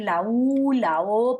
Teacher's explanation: es la parte más interna de la lengua, lo que llamábamos la raíz de la lengua, la que se aproxima a la parte posterior también del paladar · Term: vocales que llamamos posteriores